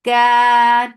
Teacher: Ka 2 counts long and make kaf light.